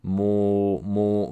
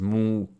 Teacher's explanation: So I think there's a chance it could be kind of like my, it's not quite the same thing, but it reminds me of the other day when I was imitating the word muito. And I had a tendency, I noticed, to do a more open vowel instead of a more closed vowel for that oo.